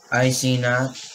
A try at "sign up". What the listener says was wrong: Not sing up. It's sign up.